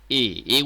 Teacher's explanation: দেখো উচ্চ মধ্য অবস্থানে থাকে জিউভা